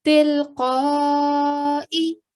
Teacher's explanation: you also stretched out the sound of qaf because you know there is a mad kabir. We give a 4 to 6 second timing.